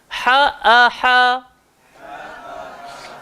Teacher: Ha pedas keluar dekat tengah tekak, hamzah keluar dekat bawah tekak.